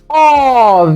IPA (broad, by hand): ɔ: